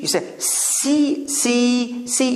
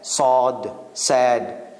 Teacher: you say see, see, see. You can hear the hiss. But when you say the guy is sad, sod, sad, there's not that much hissing sound in it